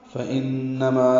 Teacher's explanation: نون مشدد پہ غنہ ہے، اور ما الف مدہ ہے 2 حرکات لمبا کریں گے